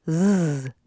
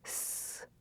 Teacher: S and Z sounds are produced in the same way. The only difference is that Z has a buzz, or is voiced, z, and S does not, s. Both sounds are made with the same mouth and tongue positions.